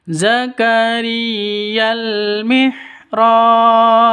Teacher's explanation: Kalau sukun sudah masuk, sudah memenuhi syarat qalq qalqalah. Dibaca qalqalah harus dipantulkan ke huruf bnya.